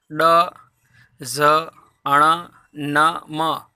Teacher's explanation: इसके अलावा ऊपर ड, ज, अण, न, म, ये भी व्यंजन ही है। तो वर्णों का उच्चारण नासिका के साथ साथ क्रमशः कंठ, तालु, मूर्धा, दांत, होष्ठ के स्पर्श से होता है, तो इनको नासिक्य व्यंजन भी कहते हैं।